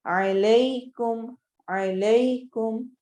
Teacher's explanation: یا لین ہو رہی ہے کیونکہ یا ساکن سے پہلے زبر فتحہ آ رہی ہے